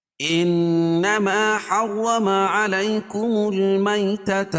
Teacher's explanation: انما نون مشدد ہے، اس میں غنہ ہوگا